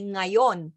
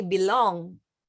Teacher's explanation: the Tagalog consonant NG, which is initial velar nga, which is in front and hard for English speakers to pronounce because it's in front. Like, for example, we say ngayon, but you would say belong.